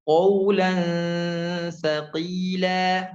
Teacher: Qawlan lan tidak tebal ya, nun sukun tidak tebal, dia masuk ke huruf dekat ke huruf sa